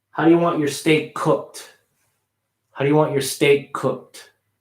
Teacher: So I'm making the K a little smaller, but I'm still pronouncing it. Okay, if you do this, you can squeeze those words together and you'll be less apt to put an A in between cooked through.